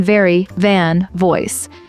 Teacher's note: your top teeth touch your bottom lip like in very van voice